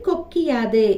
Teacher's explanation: குற்றியல் உகரத்தில் உள்ள உகரம் இகரமாக மாறும் அந்த இகரம் தனக்குரிய ஒரு மாத்திரை அளவிலே இருந்து அரை மாத்திரை அளவாக குறைந்து ஒலிக்கும் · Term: குற்றியல் இகரம்